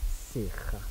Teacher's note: we're going to do a breathy voice vowel